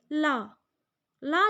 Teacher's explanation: जिनके उच्चारण करते समय हवा जो होती है वो जीभ के साइड से निकल जाती है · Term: पार्श्विक व्यंजन